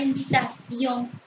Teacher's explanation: la palabra invitación se pronuncia con mayor intensidad en la última sílaba